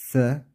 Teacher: dilimizin ucu üst ön Dişlerimizin başından biraz dışarı çıkar o şekilde okuruz dilimiz oradayken nefesimizi dışarıya doğru veririz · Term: Peltek